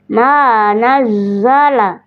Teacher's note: Nazzala huruf zai punya sifat safir. Nampakkan apalagi ketika dia bertasydid.